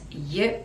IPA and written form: jə (you)